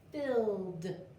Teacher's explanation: Sometimes ed says d. This is happening because the last sound of my base word is a voiced sound. So my last sound in fill is ooh.